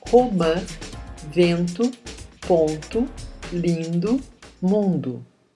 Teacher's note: A nasalidade de uma vogal, A, E, I, O, U, é marcada pelo til ou pelas letras M e N nos finais de sílabas. A corrente de ar ressoa nas fossas nasais.